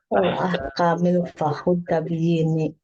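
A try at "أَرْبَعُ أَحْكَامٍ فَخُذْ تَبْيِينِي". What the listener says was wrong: huruf zalnya jelas ya. Arba'u ahkamin fakhudh tabiin. Fakhudh tabiini zal.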